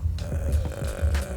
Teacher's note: after shouting my voice gets croaky like I get this weird vocal fry in my voice